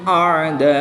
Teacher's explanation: अलिफ मद्दा के बाद हमजा उसी कलमे में है। तो यहां पर मद्दे मुत्तसिल होगी। तीन से पांच अलिफ तक खींच कर पढ़ेंगे।